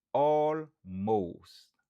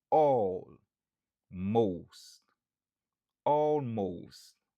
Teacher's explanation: Stress syllable lan li sou premier syllabe lan.